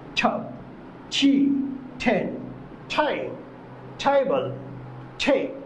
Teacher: জিহ্বার ডোগা উপরে দাঁতের গোড়ার সাথে হালকা স্পর্শ করে বলতে হবে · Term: ঠ সাউন্ডে